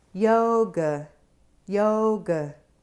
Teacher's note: So yoga has a schwa sound in the second syllable.